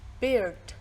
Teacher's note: The starting point is a little closer than e in bit and bin.